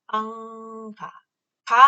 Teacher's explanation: 목젖이 내려왔다가 막아서 앙 할 때는 코로 통하는 통로를 열리게 하고요. 가 할 때는 다시 닫아버려요. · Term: 비음